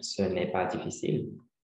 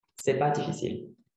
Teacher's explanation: the ne in negative sentences is not pronounced